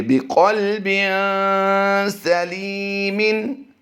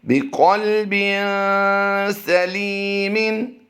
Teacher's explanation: لام یا زیر لی کو ہم لمبا کر کے پڑھیں گے کیونکہ یہاں پر یا مدہ ہوتا ہے۔ تو آئیے اس کی رواں ادائیگی کرتے ہیں۔